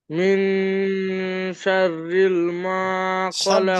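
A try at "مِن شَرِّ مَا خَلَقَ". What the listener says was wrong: শাররিল না, শাররি মা। শাররি মা।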